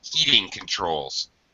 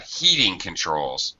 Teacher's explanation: we're going to say this with the first word with a high pitch or a high stress and the second word with a low pitch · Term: compound nouns